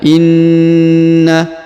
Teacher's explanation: huruf na ditahan dan ditekan ya Inna ditahan du sampai 3 harakat karena berharakat tasdid